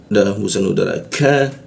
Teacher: Ka masuk ke ka di siku tenggorokan dia. Nah, lidahnya kita turunkan sehingga membaca ka-nya itu ada hembusan udara